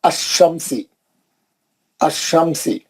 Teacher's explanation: लाम को नहीं पढ़ा जाता